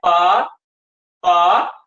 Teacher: हम बोल रहे हैं पा, पा, दोनों होठ मिल रहे हैं आपस में कि नहीं मिल रहे हैं? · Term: ओष्ठ